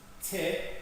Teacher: So, almost there's no energy, but oi, then you see this kind of vibration here with a higher energy. Te, the first part which belongs to t, which is unvoiced, has lower energy